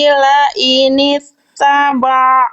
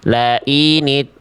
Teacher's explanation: Dan masih ainnya masih agak masuk hidung. Enggak apa-apa nanti PR ain masuk hidung itu dilatih.